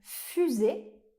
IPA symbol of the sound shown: y